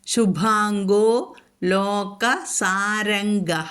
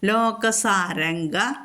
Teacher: അനുസ്വാരം കഴിഞ്ഞിട്ട് കവർഗം വന്നിരിക്കുന്നത് കൊണ്ട് അനുസ്വാര സ്ഥാനത്ത് ങ ചൊല്ലണം